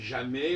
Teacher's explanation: on n'entend pas le S de jamais